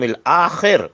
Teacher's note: خے کو حلق سے پڑھیے